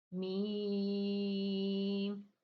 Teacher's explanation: دونوں ہونٹوں کے خشک حصے سے میم ادا ہونا ہے. دیکھیں باہر والا میں نے آپ کو بتایا خشک حصہ، اور اندر والا جو ہے وہ تر حصہ، نرم حصہ.